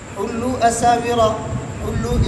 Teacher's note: حُلُّ اس کے اندر مد منفصل ہے، مد منفصل میں دونوں راویوں کے لیے قصر ہے۔